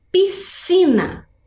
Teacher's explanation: temos s e c mas vejam que eles formam um som único